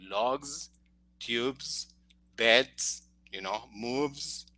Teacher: there is a vibration in that s · And if the last sound before that S is voiced, like, for example, the examples that we have here, the sound of that S is Z, vibrated